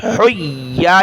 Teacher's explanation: ہا کو گلے سے نکالیں